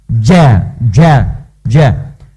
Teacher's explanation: Ja itu hurufnya huruf hentakan, ja, jadi dari dalam, infijar, jadi dari dalam dikeluarkan.